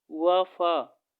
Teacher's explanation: दंतोष्ठ दोस्तों निचले होंठ व ऊपरी दांतों से वा, फा ये दोस्तों दंतोष्ठ कहलाते हैं दोस्तों।